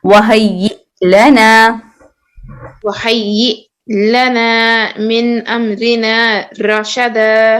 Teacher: یہ میں حمزہ سے جھٹکا دینا ہے کیونکہ حمزہ کے اوپر سکون ہے